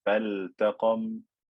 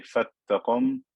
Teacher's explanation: I don't merge this lam into the ta. I don't say fattaqam because this lam is not lam shamsiyya.